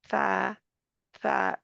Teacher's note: जुबान की नोक दांतों के किनारे से जाकर लग जाती है उस जनी के जैसे लग जाती है मतलब उधर लगाए रखना